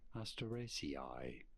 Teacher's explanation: It's on the third syllable on the ra syllable.